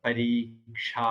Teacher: இதுல முதல் எழுத்து மட்டும் ஒரு மாத்திரை, அடுத்த 2 எழுத்து 2 மாத்திரை நெடில்.